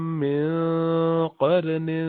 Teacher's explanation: قاف کے بعد را وہ بھی موٹا, قاف بھی موٹا